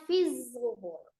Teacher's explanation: Sedangkan ini bnya dibaca pendek kemudian rnya disukunkan karena waqaf ya ro kasrah ketika diakhir maka dia disukunkan nah sebelum ro sebelum